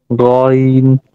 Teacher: ঝিবার গোড়া যেখানে শেষ গলার শুরু ওইখান থেকে আসবে ঝিবার যে মধ্যখান উপরের দিকে যাবে না